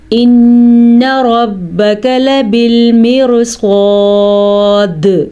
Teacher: ان پہ نون غنہ ادا کریں گے. لبالمرصاد صاد پر پڑھیں گے.